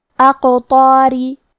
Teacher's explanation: قلقلہ کا معنی ہے حرف ساکن کو ہلانا، تو ہم حرف القاف کو ہلاتے ہوئے یہ کلمہ کو پڑھیں گے